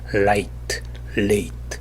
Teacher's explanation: L 발음은 공기가 똑바로 흐르지 못하고 공기가 혀의 측면으로 흐릅니다.